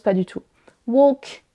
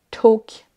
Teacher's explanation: le L est silencieux, ne se prononce pas du tout